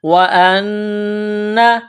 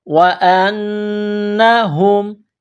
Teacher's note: آواز ناک میں چھپانی ہے، غنہ کرنا ہے